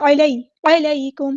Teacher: علیکم، عین کو مستحلق یعنی مڈل تھروٹ سے ادا کرنا ہے، یا پر مدلین ہو رہی ہے نرمی سے موڑیں گے ، علیکم نہیں پڑھنا، علیکم، کاف باریک ادا کرنا ہے، میم